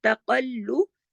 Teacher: قاف موٹا پڑھا جائے گا، تا موٹا نہیں پڑھا جائے گا · لام بھی موٹا نہیں پڑھا جائے گا، لیکن تشدید ہے، دو لام ہے